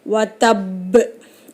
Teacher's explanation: அழுத்தி ஓதி இங்கே 2 பாவை நம்ம கணக்கெடுத்தால் சுக்குன் பெற்ற பால முடியுது. சுக்குன் பெற்ற பா கல்கலாவுடைய எழுத்து. அப்போ அழுத்தி அசச்சி வதப் அப்படின்னு நம்ம நிறுத்தணும்.